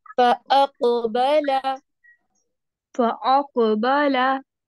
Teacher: कौफ को एक तो आपने हैवी पढ़ना है, दूसरा यहाँ पे आपकी आवाज हिलेगी कौफ की